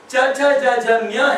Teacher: ನಾಲಿಗೆ ಹೋಗಿ ಪ್ಯಾಲೆಟ್ ಹಾಕುತ್ತೆ